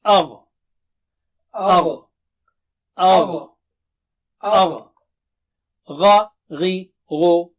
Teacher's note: It is a thick and high sounding letter. It has isti'la, as they say in terminology of Tajweed.